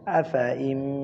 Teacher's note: নুন সেকেন্ডে পরে কি আছে, মিম আছে, ঈদগামে বা গুন্না, কি আছে, ঈদগামে বা গুন্না। আফা ইম, তাসদিদ দিয়া গুন্না সহিত পড়িতে হবে মিলাইয়া